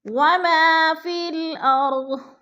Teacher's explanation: اب آگے ہے ما میں الف مدہ ہو رہا ہے، الف خالی سے پہلے میم کے اوپر زبر ہے تو الف مدہ کو ہم نے ایک الف 2 حرکات کے برابر لمبا کر کے پڑھنا ہے